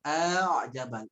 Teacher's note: a a Nah, kalau ada bunyi memanjang, a'jabal, itu disebutnya isba. Isba itu dia bunyi memanjang pada huruf yang harusnya dibaca pendek.